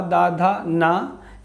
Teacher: जो हमारी जिह्वा है वो दांत को स्पर्श करती है